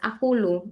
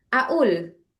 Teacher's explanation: Tapi di amiah itu mereka qofnya itu jadi hamzah.